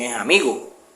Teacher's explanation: Por ejemplo, cuando ellos hablan de amigos, ellos dicen es amigo, ahí desaparece la S, hacen elisión de la S.